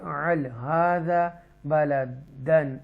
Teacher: اظہار کریں گے کیونکہ تنوین کے بعد حمزہ آ رہا ہے حروف حلقیہ میں سے ، تھروڈ لیٹر میں سے، تو اظہار کریں گے یہاں پر۔